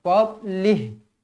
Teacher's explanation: tolong ingat huruf dad bukan huruf Qalqalah jadi jangan baca melantun jangan baca fadlih Tak nak fadlih baik kalau kita berhenti dekat